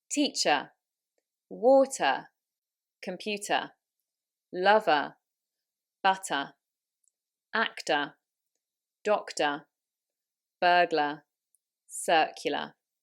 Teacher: the e r a r and o r ending words do not have an r sound in british english they will either be said as a schwa so just an uh